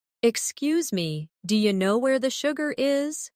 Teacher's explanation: Notice how do you changes to dia? That's how natives really speak.